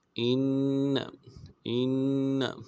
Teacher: حمزہ کو نون کے ساتھ ملانا ہے، نون کے اوپر تشدید ہے، زور دیں گے